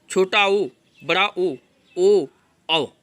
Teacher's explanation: तो पहला नंबर वृत्ताकार स्वर। जिनके उच्चारण में ओठों की आकृति वृत्त के समान बनती है, जैसे छोटा ऊ, बड़ा ऊ, ओ, औ।